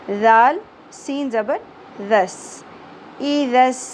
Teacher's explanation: ذال کو نرمی سے ادا کیا جاتا ہے، سیٹی اور شدت نہیں ہونی چاہیے